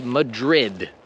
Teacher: in English, we pronounce the D very strongly.